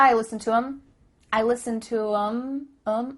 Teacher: the word them has the th cut out